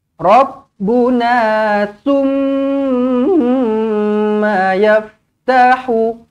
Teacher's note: Dengungkan mim sabdu wajibul gunnah.